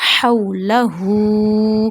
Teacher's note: Before waw sakina fatha come, then you not stretch that waw, you not sudden pause that waw. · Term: waw lean